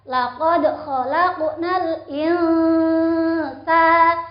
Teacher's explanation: Ikhfa hakiki karena nun sukun bertemu sin dibaca samar.